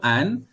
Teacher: Kalau nun, dia keluar, dia mengalir keluar, sifat rokhawah tu mengalir keluar melalui hidung. Hidung. Rongga hidung.